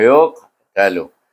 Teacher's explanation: Kemudian kita jumpa huruf qaf, huruf qalqalah di mana dia mati di sana. Qalqalah dia mati, jadi kita kena baca dengan qalqalah sugura, iaitu yuqatalu.